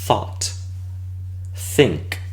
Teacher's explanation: Entonces, todos estos sonidos son sordos si nosotros solamente nos quedamos con lo fricativo de la S, lo dental, pero lo hacemos interdental. Terminamos con una fricativa interdental sorda, que es este sonido, el th, como en inglés thought, think.